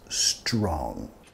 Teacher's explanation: no quieres meter sonido vocálico extra antes de la ST. No quieres decir e strong, más strong.